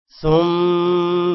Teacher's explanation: ثم میم پر غنہ ہے ما کو لمبا نہیں کرنا صرف غنہ کرنا ہے